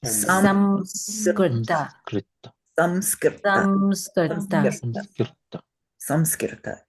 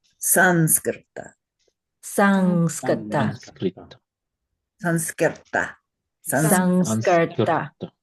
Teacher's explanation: It nasalizes the previous vowel into more of an M sound. Now, to the Sanskrit ear, you cannot pronounce an M before S. You would have to say Sanskrit.